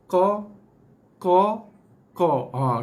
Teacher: Kita fokus keluarkan bunyi dia daripada pangkal lidah. Pangkal lidah. · Okey, ni huruf yang keluar daripada pangkal lidah. Sebab tu bila kita sebut huruf qa, kita akan rasa ada sedikit tekanan pada pangkal lidah kita ni.